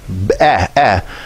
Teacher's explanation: Now this one, you don't usually hear a y at the end of eh.